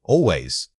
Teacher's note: The pitch should drop sharply to signal that this is non-negotiable.